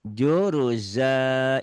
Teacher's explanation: juruzan hentikan jadi juruza panjang ya